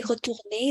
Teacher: When I say retourner, the R at the end is not pronounced. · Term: The R is mute